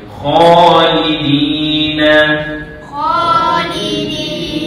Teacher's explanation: Kha tu panjang dua harakat. Lidi. Di tu pun panjang dua harakat. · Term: mad asli